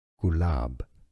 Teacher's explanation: Gulab, with a stress on that second syllable